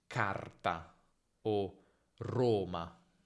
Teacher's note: In certi casi, anche quando la R è singola, sentirai che viene leggermente allungata.